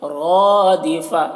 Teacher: रॉ को मोटा पढ़ रहे हैं और अलिफ है तो खींच रहे हैं